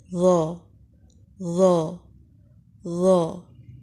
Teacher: ذا حروف مستعلیہ میں سے ہے، یعنی بلند اور موٹا پڑھتے ہیں۔ زبان کا پچھلا حصہ اوپر اٹھتا ہے، جیسے کہ پکچر میں نظر آ رہا ہے، جس سے موٹی اور بلند آواز آتی ہے، ذا ذا ذا۔